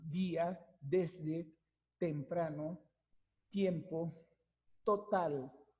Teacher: nuestra lengua, la punta, se va hacia la parte posterior de los dientes superiores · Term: dental